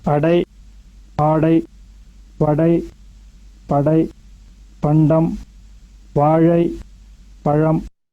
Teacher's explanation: You can hear the stress on the first syllable of the word.